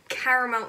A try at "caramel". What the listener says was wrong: Caramel. Caramel. It is pronounced caramel. When you say caramel, you are missing out a letter.